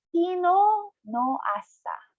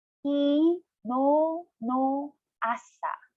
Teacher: You have to pronounce no of kino a little bit longer because there's another vowel attached to no.